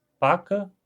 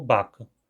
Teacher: o Unriquiano não faz esse contraste entre surdos e sonoros